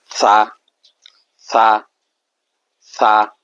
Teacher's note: ছালে হরফটা ভুল পড়ছি শক্ত হয়েছে ছানা এটা নরম করে পড়বো ছা জিহ্বার আগার থেকে হবে জিহ্বার আগা সামনের উপরের দাঁতের আগার সঙ্গে লাগাইয়া ছা সা বা